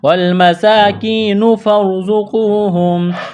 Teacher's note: را ساکن سے پہلے زبر ہے، را کو موٹا کرنا ہے، زا میں سیٹی کی آواز پیدا کریں گے